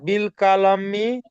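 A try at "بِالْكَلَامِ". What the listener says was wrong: বিল কলামি, কালামি নয় ওটা, আপনি কালামি বললে কাপ হয়ে যাচ্ছে, বুঝতে পারছেন? কিন্তু এটা কাপ নয়, এটা কপ।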